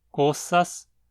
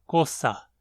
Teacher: um S final é debucalizado em H em muitos dialetos, de forma que uma palavra como coças se torna coça.